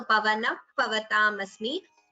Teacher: Here pavanaha visarga followed by pa. It is upadhmaniya.